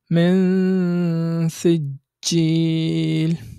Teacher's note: যখনই আমি নুন সাকিন উচ্চারণ করছি ঠিক তখনই আমি গুন্নার সাথে সাথে এর পরবর্তী হরফ অর্থাৎ সিনের মাখরাজে গিয়ে গুন্নাটা করছি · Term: ইখফা